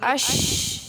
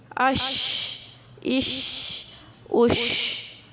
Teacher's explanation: آواز اس میں پھیل رہی ہے، آواز کا پھیلاؤ ہو رہا ہے، یہ اس کی صفت ہے۔